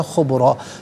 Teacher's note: را پر دو زبر کی تنوین پر کر کے پڑھیں گے۔ وقف کی صورت میں بھی الف ما قبل را پر زبر ہوگا تو پر کر کے ہی پڑھا جائے گا